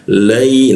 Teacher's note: huruf ya itu tengah lidah, posisinya ada aksen kuat di huruf ya mati.